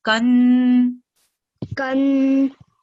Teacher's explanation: And for the next part, we're going to join, because letter noon has a shadda, and that means that we're going to prolong the sound for 2 seconds. So when we join kaf with noon, we're going to hold the sound for 2 seconds